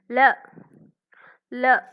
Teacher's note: நாவின் இரு பக்கங்கள் தடித்து மேல் பற்களின் அடியை தொடுவதால் லகரம் தோன்றும்